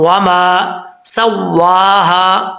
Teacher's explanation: واؤ کو پڑھتے وقت ہونٹ گول کریں گے، اگر ہونٹ گول نہیں ہوں گے تو سمجھ لیجئے گا کہ یہ اپنے مخرج سے صحیح طریقے سے ادا نہیں ہوا.